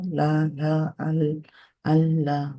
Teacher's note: তারপরে এটা কি করে, এই পাশ দিয়ে বেরোয় আর ওই পাশ দিয়ে বেরোয়, দুই পাশ দিয়ে বের হয় লামের সাউন্ডটা। তো এই জন্য যেহেতু এটা রাস্তা পরিবর্তন করে, এই জন্য এই ক্যারেক্টারিস্টিক্সটা এখানে আছে। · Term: ইনহিরফ